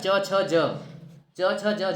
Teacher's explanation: च छ ज झ ये चार जो होते हैं अ स्पर्श संघर्षी व्यंजन होते हैं